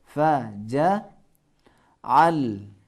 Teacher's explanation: اب یہاں اردو کی تلفظ نہیں کرنا، اردو کی طرح تلفظ نہیں کرنا ہے، جعل نہ ہو، جعل، حلق کے درمیانی حصے پہ تھوڑا زور لگانا ہے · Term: عین